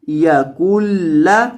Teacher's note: یہ جو درمیان میں نون ساکن ہے اس کو نہیں پڑھنا، کاف کو لام کے ساتھ ملانا ہے، نون کے ساتھ نہیں ملانا.